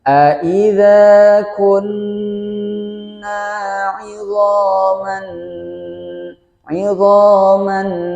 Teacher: Kemudian bertemu dengan huruf nun salah satu huruf idgham Bi digunakan masuk kepada huruf nun kemudian disertai dengan guna atau dengan dengungan dan ditahan selama dua harokat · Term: Idgham Bighunnah